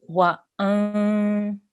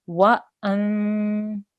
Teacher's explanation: you're not going to make a sharp, not a sharp noon sound, not a clear noon sound. It's a nasal sound.